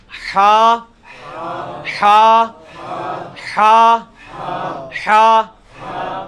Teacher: یہ وسط حلق سے یعنی حلق کے درمیان سے نکلتا ہے. یہ کبھی آپ وہ گلے والی ٹافی کھائیں نا، وہ والی آواز ایکزیکٹ بالکل کلیئر وہاں سے جو نکلتی ہے نا، یہ ہا کا مخرج وہی ہے.